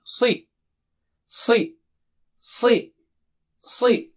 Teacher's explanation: Si is very thick and high.